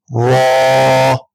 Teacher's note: زبان کی نوک اور مقابل کے تالو سے ادا کریں گے ہم را کو